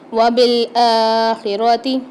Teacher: کھڑا زبر یعنی ایک الف مقدار کھینچ کے پڑھیں گے اس کو